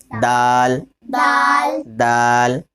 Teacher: دال، میں نے بتایا تھا تا کا مخرج جیسے ہے نا، جس طرح تا ادا کیا تھا نا، زبان کی نوک اوپر کے دانتوں کی جڑ، تا، وہیں سے دال نکلے